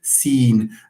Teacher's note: And when you say seen, the e there, you make the air move also through the nose, making this vowel somehow nasalized. Why? Because you are anticipating a nasal sound. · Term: nasalization